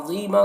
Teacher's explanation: ज़ा को पुर पढ़ना है, ये हुरूफ मुस्तालिया में से है, और या मद्दा है यहाँ पर।